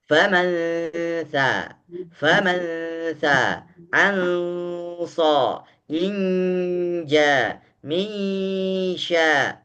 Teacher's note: nun sukun ketika diucapkan dan dia gunnahnya sudah naik dan ditahan di hidung, adapun mulut berbentuk sudah dengan huruf setelahnya. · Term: ikhfa